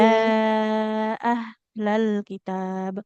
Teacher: Karena beda oh tempat keluar ya huruf. Kalau ya, H dia di pangkal tenggorokan ya. Kayak kita kalau iya.